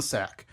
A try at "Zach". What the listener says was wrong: Zach. It's a Z.